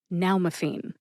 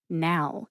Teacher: Put all three syllables back together and you get nalmefene. Emphasize that first syllable, nal.